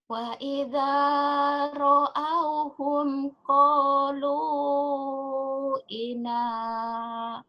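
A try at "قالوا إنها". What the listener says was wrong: kok ina sih? Qalu innaha gitu.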